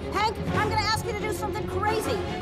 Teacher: First, Dory uses the contracted form of going to, which is gonna. Then, when she says you, it is shortened to ya. And the O at the end of to becomes a schwa and sounds like ta. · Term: connected speech